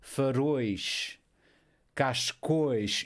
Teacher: Eu continuo a colocar o acento na última sílaba, mas o som é fechado.